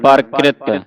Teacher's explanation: ਇੱਥੇ ਵਿਸਰਾਮ ਹੈ ਪਰੰ ਤੇ ਪਰਕ੍ਰਿਤ ਬੋਲਣਾ ਪਰਕ੍ਰਿਤ ਕਿਰਤ ਨਹੀਂ ਬੋਲਣਾ ਜੇ ਕਿਰਤ ਬੋਲਦੇ ਆਂ ਤੇ ਰਾਰਾ ਪੂਰਾ ਲੱਗਦਾ ਇਥੇ ਪੈਰ ਵਿੱਚ ਰਾ ਰ ਜਲਦੀ ਦੇ ਨਾਲ ਪੜਿਆ ਜਾਵੇਗਾ